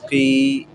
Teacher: زیر ہونٹوں کو نیچے کی طرف کو مائل کر کے یائے معروف کی سی بو دے کر ادا کرنا چاہیے. جیسے قوف زیر قی، تو یہ نیچے کی طرف جو جا رہا ہے نا قی، یہ جو تھوڑا سا یوں بھی اندازہ ہو رہا ہے کہ جیسے دب رہا ہے.